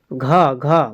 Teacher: घ का उच्चारण स्थान कौन सा है तो कंठ से हो जाएगा